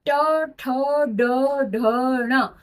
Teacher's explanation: ये पांचों ही वर्ण मूर्धा को टच करके आप तक ये अक्षर पहुंचते हैं, ये आवाज पहुंचती है, इसलिए हमने ट वर्ग को मूर्धा में रखा। · मुख के अंदर और दांतों के पीछे, जस्ट दांतों के पीछे ऊपर वाला भाग को छूकर जो अक्षर बोले जाते हैं वो होते हैं मूर्धा। उस स्थान को हम बोलते हैं मूर्धा, यानी कि मुख के अंदर ऊपर वाला स्थान मूर्धा।